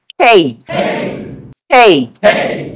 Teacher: সেটাকে দুটো জিনিস ঠিক করতে হবে। নাম্বার 1 হ দিয়ে বলবো, নাম্বার 2 হচ্ছে লাস্টে একটা হ্রস্ব ই লাগবে, রাইট?